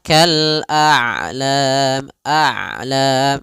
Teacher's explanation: Syiddah syiddah tertahannya suara, rokhawah mengalirnya suara. Ain itu kedua-duanya tidak terlalu dialirkan, tidak terlalu ditahan suaranya. Maka kal a'lam, a'lam masih ada setengah-setengah. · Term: sifat bainiyah